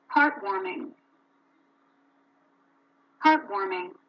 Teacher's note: when you have compound nouns, so the stress is in the first syllable